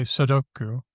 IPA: sədoku